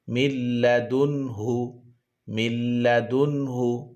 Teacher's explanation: মিল্লাদুনহু, মিম নুন লাম জের মিল, লাম মিম নুন লাম জের মিল, মিল মিল বলতে হবে। নুন সাকিনের উচ্চারণটা লামের সাথে মিলিয়ে যাবে। মিম নুন লাম জের মিল, লাম জবর লা, মিল্লা। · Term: ইদগামে লাম